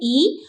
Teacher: जब आप ई का उच्चारण करते हैं तो फ्रंट का एरिया जो है वो हरकत करता है, इसलिए उसे फ्रंटल वॉवेल कहा जाता है यानी कि अग्र स्वर।